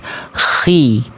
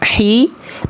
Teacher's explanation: huruf kho dia ada kerasak-kerasaknya sedikit.